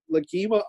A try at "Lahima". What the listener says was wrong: I believe the G is silent. I believe it's Lahima.